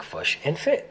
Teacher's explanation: the kit-foot vowels are reversed for the words fish and foot to sound like fush and fit